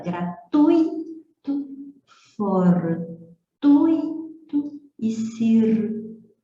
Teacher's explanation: com o U e o I formando um ditongo decrescente